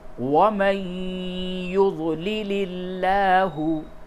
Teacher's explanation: اس جگہ پہ لفظ اللہ کے لام کو باریک پڑھیں گے کیونکہ اس سے قبل زیر ہے · من، میم نون زبر من، من اضل اللہ، اور اس جگہ پہ اگر وقف کریں گے تو ہوگا من اضل اللہ، من اضل اللہ، ومن یضلل اللہ، نون ساکن کے بعد یا ہے، اس جگہ پہ ادغام مع الغنہ ہوگا۔ ومن، نون نہیں پڑھا جائے گا، یعنی کہ نون کو یا سے ادغام کر دیں گے